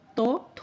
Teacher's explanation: তটা অল্প সময় ধরে উচ্চারণ করি, থটা বেশি সময় ধরে উচ্চারণ করছি